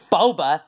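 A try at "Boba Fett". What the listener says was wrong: It's not pronounced Boba. Baby Yoda, you're talking about the drink. It's pronounced Baba. Baba Fett, Baba Yoda, Bobby, Bob.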